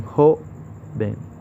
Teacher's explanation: O en joven, donde recae en la sílaba jo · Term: acento fonético